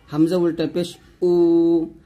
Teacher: হামজা উল্টা পেশ উ হলকের শুরু থেকে